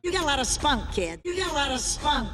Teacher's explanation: two tap t's here, which sounds like a soft du duh. This usually occurs when a t is between two vowel sounds